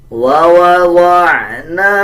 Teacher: نون کے اوپر زبر ہے اس کے بعد الف ہے تو اس کو 1 سیکنڈ لمبا کریں گے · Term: حروف مدہ